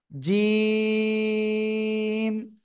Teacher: জিব্বার মধ্যখান তার বরাবর উপরে তালুর সাথে লাগিয়ে তিন আলিফ টানে উচ্চারণ করতে হয়